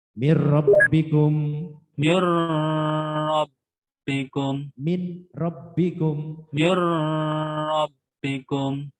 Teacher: jadi asalnya min menjadi mirro